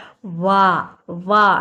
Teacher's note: ఇక్కడ correct answer వచ్చేసి దంత్యోష్టం అంటే వా వా అంటే దంతాలు తగులుతాయి, మన లిప్పు పెదవుల సహాయం రెండు సహాయంతో పలుకుతాం కాబట్టి వాని ఏమంటామంటే మనము దంత్యోష్టము.